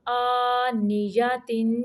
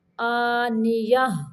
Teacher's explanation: حمزہ کھڑی زبر آ، نون زیر نی، آنی، یا زبر یا، آنیہ، تا دو زیر تین، آنیاتن، آنیہ۔ گول تا کو اگر ملانا ہے تو تا پڑھیں گے، اگر ٹھہرنا ہے رکنا ہے تو ہم اس کو ہا پڑھیں گے